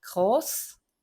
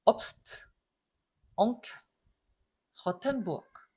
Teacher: Groß만 장모음이고 나머지는 전부 단모음이에요. 왜냐면 자음 두 개가 연달아 나와버리잖아요.